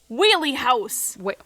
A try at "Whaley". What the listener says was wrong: You said wheelie. At least it sounded like the Whaley House. Like whales.